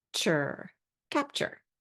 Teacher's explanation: when we blend T into a long u sound there's a little bit of a CH sound that pops in right here when you say it quickly it turns into ch